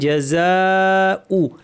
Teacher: আলিফের পরে হামজা আছে একই শব্দে লম্বা করে মাদ মুত্তাসিল দুই আলিফ এবং হামজাটা শক্ত হবে।